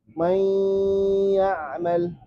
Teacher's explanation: Lebur dengung. Nunnya dilebur ke ya, tapi masih tersisa dengung.